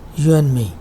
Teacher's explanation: this duh consonant is coming between two nasals · the d of and is left out, is not pronounced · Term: elision